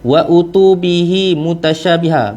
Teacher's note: bihi tu berapa harkat? Dua harkat saja, tak boleh lebih. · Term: mat silah qasirah